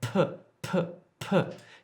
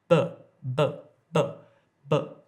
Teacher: you can actually feel the air hit your hand · when I say but there's no air coming out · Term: aspirated consonants